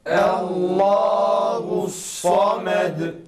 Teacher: Samed ismindeki sad harfine dikkat etmemiz gerekir. Bunun sad sesine kalın sine benzemeden net sad sesiyle çıkması gerektiğini aklımızda tutmamız gerekir.